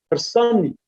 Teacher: it is accented on the second, that is on penultimate syllable. That's why we have Harsanic, and naturally this accented A would not drop, and then we have different phonological development.